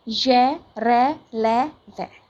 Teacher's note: इन व्यंजनों का उच्चारण स्वरों एवं व्यंजनों के बीच का सा होने के कारण अंतःस्थ व्यंजन कहते हैं। इन व्यंजनों का उच्चारण करते समय जीभ मुंह के किसी भी भाग से पूरी तरह स्पर्श नहीं करती